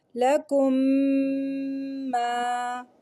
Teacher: ایک الف کے برابر یا 2 کاؤنٹس کے برابر ہم غنہ کریں گے. میم ساکن کو میم متحرک کے ساتھ ملا کر اس طرح پڑھیں گے کہ دونوں ایک ساتھ مشدد ادا ہوں، ایک ساتھ مشدد ادا ہوں. · ہم پہلے میم کو دوسرے میم کے اندر مرج کر دیں گے، تو یہ ایک میم کے طور پہ ادا ہوگا. ساتھ میں ہم یہاں پہ غنہ بھی کریں گے 2 کاؤنٹس کا. · لکم ما کو ہم پڑھیں گے لکم ما، ایک الف کے برابر یا 2 کاؤنٹس کے برابر ہم غنہ کریں گے. میم ساکن کو میم متحرک کے ساتھ ملا کر اس طرح پڑھیں گے کہ دونوں ایک ساتھ مشدد ادا ہوں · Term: ادغام شفوی